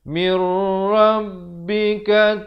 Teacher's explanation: di sini idgham bila gunnah, masuk tanpa dengung.